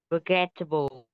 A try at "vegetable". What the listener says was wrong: Ờ, em đọc là forgettable. Là sai mà rơi cuộc lắm này. Từ đây trong âm nó rồi âm điệp thứ nhất. Vì vậy ta không đọc là forgettable. Từ đọc đúng này. Vegetable. Vegetable. Từ này dơ rồi nó âm chặt âm dơ không âm ơ. Vegetable. Vegetable.